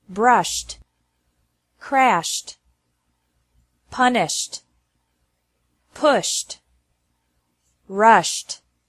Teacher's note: e d is pronounced like t after verbs ending with an sh sound